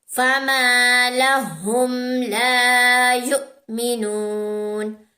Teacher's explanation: علی سے پہلے زبر ہے، لام کے اوپر علی مدہ ہے، دونوں کو اسٹریچ کریں گے. واؤ سے پہلے پیش ہے، واؤ مدہ اسٹریچ کریں گے. اور اس کو واؤ کو نہیں پڑھیں گے، حمزہ کو پڑھیں گے.